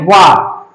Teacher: ये दांत जो है ये जाकर के होष्ठ में टकरा रहा है, सीधे स्पर्श कर रहा है, इसीलिए क्या कहते हैं इसको, दंतोष्ठ, दांत और होठ से टकराने वाला।